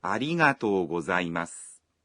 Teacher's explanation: When saying ありがとう, you say the vowel o in to one beat longer.